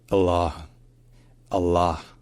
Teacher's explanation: then we have a very long dark l sound in the middle and then we have a along all sound like in Father